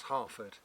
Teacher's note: there's two RS in there and I didn't pronounce either of them that's because I'm southern English I'm non rotic uh but in Old English those RS were were pronounced and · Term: non-rhotic